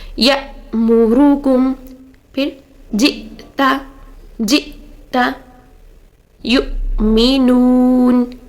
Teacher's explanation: ہم حمزہ کی آواز کو بند کریں گے, یعنی آواز کو تھوڑا لاؤڈ کریں گے اور پھر بند کریں گے